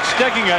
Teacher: the accent on the pronunciation that most people use is on the second syllable but says it should be on the first